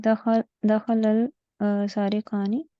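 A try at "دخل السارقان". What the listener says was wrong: दखलस हर्फ शम्सी है ना, दखलस सारिकानी।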